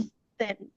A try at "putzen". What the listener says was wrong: আবার পুতসেন। ত। পুতসেন। না না, টি না, ট না, আপনি ত উচ্চারণ করুন, পুতসেন বলুন।